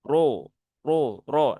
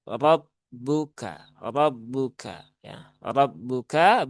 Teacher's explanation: semua dibaca dengan tafkhim ya atau tebal. Maka naikkan pangkal lidah.